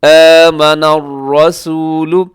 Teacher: یہاں را ہے، را کے اوپر حرکت ہے تو را موٹی ہوگی، اور اسے رسولو نہیں کرنا، آمن الرسولو یہ غلط ہے۔